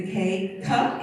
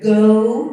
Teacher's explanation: the k-cup is unvoiced that go is voiced you can feel the vocal cords vibrate